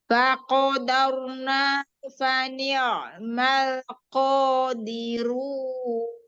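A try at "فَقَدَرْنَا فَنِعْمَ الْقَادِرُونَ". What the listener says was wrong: Dirun. Ya, tebalkan lagi huruf ro-nya, angkat pangkal lidahnya ya. Jadi qaf itu jangan digesek ya, makhorijul hurufnya jangan digesek, tapi dibenturkan aja. Faqo. Faqo.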